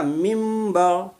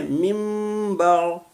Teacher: نون ساکین کے بعد حرف با آ گیا، تو حرف با آنے کی وجہ سے من کو میم سے ملا دیے، کیونکہ نون ساکین جو ہے وہ میم سے بدل گئی، تو اسی لیے اس کو پڑھیں گے میم با۔